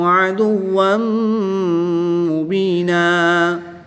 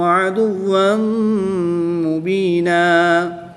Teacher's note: دو زبر کی تنوین کے بعد میم حروف یرملون میں سے ہے تو اس پر ادغام مع الغنہ ہوگا یعنی کہ یہاں پر بھی غنہ کر کے پڑھیں گے۔